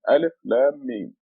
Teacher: They want you to, when you read it, to extend the Lam and the Mim. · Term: madda